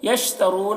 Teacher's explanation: یشترون، را کو پر پڑھیں گے، را کے اوپر پیش ہے. اور واو مدہ ہے یہاں پر، رو کو کھینچیں گے ایک الف کے برابر